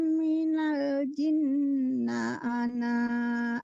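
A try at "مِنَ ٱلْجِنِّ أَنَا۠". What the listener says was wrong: Bu, jinni bukan jinna, Bu. Jinni tapi tidak panjang ninya, ananya juga nggak panjang.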